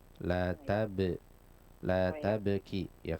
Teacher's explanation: lebih bagus tentunya seandainya di sana pastikan ada qalqalah pada bnya